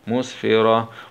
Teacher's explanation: نقف عليها بالسكون العارض مع همس الهاء